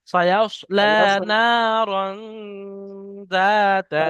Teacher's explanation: রন বলে এখানে একটু গুণনা করেন, মানে আওয়াজটা নাকের মধ্যে চেপে রাখেন।